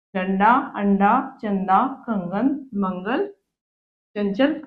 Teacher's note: अनुस्वार का उच्चारण नाक से होता है